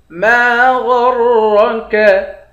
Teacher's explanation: ما غرک، میم کے بعد بھی الف ہے، الف حروف مدہ ہے، 1 الف کی مقدار کھینچیں گے۔ غین اور را دونوں کو موٹا پڑھیں گے